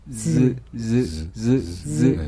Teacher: 스. 그때보다도 윗니 아랫니를 더 붙여서 그러면서 목청을 울려서 조금 약하게 · 그러니까 시옷보다 더 약한 소리다. 그리고 시옷은 안 울림소리, 마찰음. 근데 이 반시옷은 울림소리, 영어의 Z 발음과 비슷해집니다.